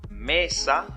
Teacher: la palabra mesa la sílaba tónica es me pero no no tiene tilde su acento es prosódico pasa también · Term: acento prosódico